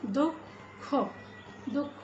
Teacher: বিসর্গটি কিন্তু উচ্চারিত হচ্ছে উচ্চারণ না হয়ে কি উচ্চারণ হচ্ছে এখানে দুঃখ এই ধ্বনিটা একটু দুবার হয়ে যাচ্ছে একটা অল্পপ্রাণ ধ্বনি এবং আরেকটি মহাপ্রাণ ধ্বনি